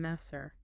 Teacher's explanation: That R is tapped slightly.